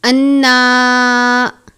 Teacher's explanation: نون مشدد پر غنہ کرتے ہیں، کھڑی زبر ہے، 1 الف کے جتنا پڑھیں گے، غنہ کی مقدار بھی الف جتنی ہے۔